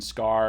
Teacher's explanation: after an s like in scar it's unaspirated